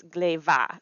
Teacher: So that there's an H that slips in there that changes the first letter of the word into its softer, what's called its lenited sound